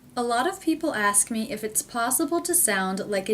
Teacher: in the entire sentence I don't hear any gaps or pauses between words